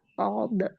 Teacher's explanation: Kita ingat kembali huruf shad itu keluarnya dari alisan ya dari lisan lidah tepatnya dari ujung lidah yang hampir bertemu dengan gigi seri bagian bawah. Jadi ujung lidahnya terletak di antara ujung gigi seri atas dan bawah, tetapi lebih mendekati ke ujung gigi seri bagian bawah, ya secara makhraj.